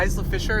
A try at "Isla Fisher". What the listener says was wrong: I don't think you pronounce the S.